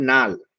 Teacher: একটা ল চেঞ্জ হয়ে ন হয়ে গেল। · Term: বিষমী ভবন